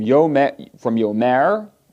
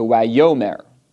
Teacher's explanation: So there the form on its own was yomer, but with the wow conversive, the pathak changed to segol, and the accent went back to the prefix, the preformative. So from yomer to wayomer.